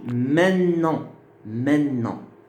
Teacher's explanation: on ne prononce plus le T. Le T disparaît. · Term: assimilation